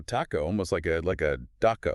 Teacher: It's the T. In Spanish, it's softer with less aspiration than in English. Gotcha. So say the word taco, but imagine that T is almost like a D.